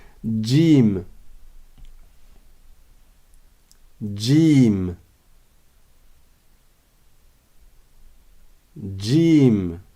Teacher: mais c'est un peu comme s'il y avait un D devant c'est pas vraiment un D parce que le D est avec le bout de la langue or la lettre Jim elle est plus en retrait plus vers le milieu de la bouche